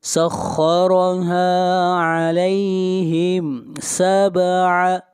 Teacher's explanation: با کے اوپر قلقلہ کریں گے، لَيَالٍ، یہاں پر تنوین کے بعد واو ہے اور واو حروف یرملون میں سے ہے، اس لیے یہاں پر ادغام مع الغنہ کریں گے۔